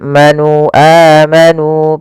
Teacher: pada lafal nu ada mad thabi'i yaitu dammah bertemu wau yang di mana di sini dipanjangkan dua harakat